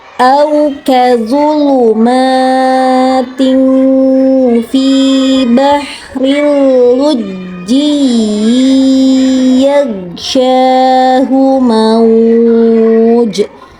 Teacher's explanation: Mauj-nya agak dipanjangkan karena itu lin, madlin. Nah, bahril lujji kebanyakan anak lupa menekankan bacaan, padahal itu adalah huruf tasydid.